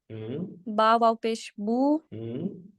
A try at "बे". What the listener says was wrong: अच्छा, इसको बा ना पढ़े, इसको बे पढ़े, इसको बा ना पढ़े, इसको बे पढ़े, राइट। बा नहीं है, बा हम अरबी में प्रोनाउंस करते हैं, ये अलिफ बे बे भे ते, राइट।